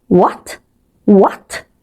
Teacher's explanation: It rises as if you are asking a question. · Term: risen tone